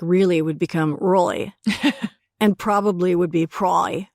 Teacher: I noticed that there was like a glottal L to begin with.